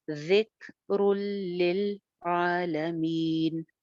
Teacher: تنوین کے بعد لام ہے، بغیر غنہ کے ادغام ہے ، ذکر للعالمین، یہاں پہ بھی لاسٹ میں مد عارض لگا